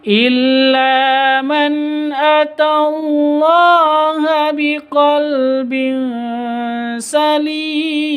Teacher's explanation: tanwin bertemu dengan sin, bacaan ikhfa hakiki, samar bacanya disertai dengan dengung